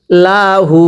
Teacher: কা পড়ুন ইনা লাম জবর লা হা উল্টা পেশ হু লাহু হা জমিরের মধ্যে এক আলিফ টানতে হবে যদি হা জমিরের উপরে উল্টা পেশ হয় তখন এক আলিফ টানে